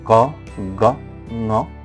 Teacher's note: Velar using the back of the tongue and the soft plate velum, as for example ka, ga, nga.